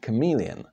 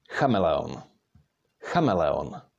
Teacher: we have to put the stress on the first syllable